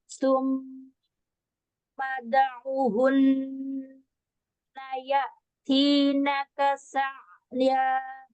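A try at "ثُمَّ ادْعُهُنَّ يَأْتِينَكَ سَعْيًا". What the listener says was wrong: Bagus, Masya Allah, tabarakallah. Alhamdulillah. Bagus.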